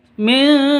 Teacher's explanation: Nun mati bertemu dengan zal. Cara bacanya samar, ya, samar, terus disertai dengung.